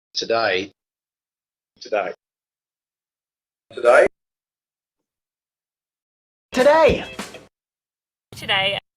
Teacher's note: the nucleus of this diphthong in some varieties of Australian English can be quite low and quite back compared to, for example, American English or British English varieties